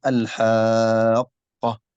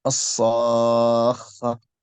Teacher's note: هذا اسمه المد اللازم الكلمي المثقل لأنه مضغم مشدد